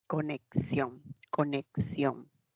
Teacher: representa a dos sonidos la k y la s